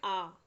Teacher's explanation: आ को हम पूरा मुंह खोलकर कंठ से बोलते हैं, ये स्वतंत्र है। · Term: स्वर